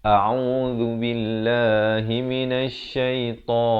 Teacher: dibacakan hamzah itu diberikan jelas, makhrajnya di pangkal kerongkong, ain di pertengahan kerongkong, zal di hujung lidah.